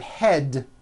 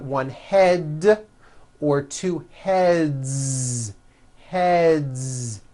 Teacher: Another word, head, ends with a voiced D.